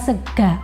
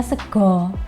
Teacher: Gini, yang khas dari bahasa Banyumasan adalah banyak bunyi vokal A, terutama di bagian akhir kata. Sementara di bahasa Jawa baku bunyi A itu berubah menjadi O.